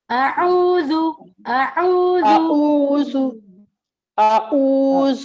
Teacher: عین کا مخرج جو ہے آپ نے درمیان والے حلق سے ادا کرنا ہے. اعوذ اعوذ اعوذ باللہ یہ دیکھیے حلق کے 3 حصے ہیں تو درمیان جی جی سے عین ادا ہونا ہے.